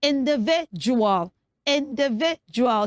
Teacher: it's the last D that makes the sound j, not d